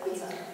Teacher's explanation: And then the emphasis is on the first syllable.